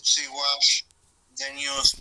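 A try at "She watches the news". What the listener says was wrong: Just be careful. Remember, acuérdate de hacer énfasis en la pronunciación de la S. Watches. Watches.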